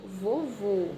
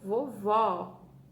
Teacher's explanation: O acento circunflexo, o som dele fica um som mais fechado, tá? E o acento agudo, ele fica um som mais aberto.